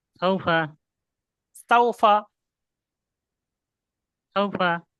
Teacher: ওয়াও সাকিনের ডাইন পাশে জবর এসেছে, অলিন হবে। অলিন নরম আওয়াজে তাড়াতাড়ি পড়তে হয়, টান দেওয়া নিষেধ।